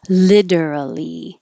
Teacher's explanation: Change the T to a D.